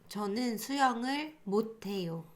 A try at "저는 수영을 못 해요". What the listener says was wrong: Like you kind of combine 못 and 해요 together.